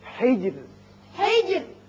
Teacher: یہاں را جب ساکن ہو جائے گا، چونکہ پیچھے زیر ہے اس لیے یہاں باریک رہے گا